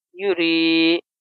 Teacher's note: یا ساکن سے پہلے زیر ہے اس لیے یہ یا مدہ ہوگا، اس کو ہم ایک الف کے برابر کھینچیں گے